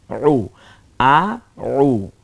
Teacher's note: আইনটা গলায় চাপ দিয়ে উচ্চারিত হবে, এজন্য আমরা এটার উপরে পেশ দিয়েছি।